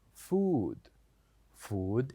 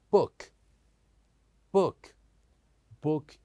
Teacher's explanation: shortly and sometimes we pronounce them in longer version for example when we said food say with me food food is longer but when we say book book is shorter